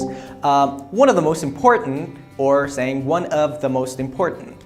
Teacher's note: So that of is pronounced lax. I mean, it's called lax pronunciation of that of.